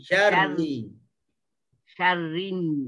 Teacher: Huruf ra walaupun dia bertasydid kita kena getar.